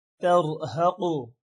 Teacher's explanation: اس میں را موٹا ہوگا اور قاف موٹا ہوگا۔